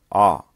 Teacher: When pronouncing the sound ah, as in saw, the lips are apart and they are very slightly rounded